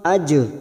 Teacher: huruf Jim sukun qqalah sugro yang mati asli di tengah kalimat jangan lupa dipantulkan